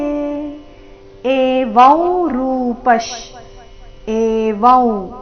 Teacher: ಅನುಸ್ವಾರದ ಉಚ್ಚಾರಣೆ ನಾಸಿಕ ಉ ರೀತಿ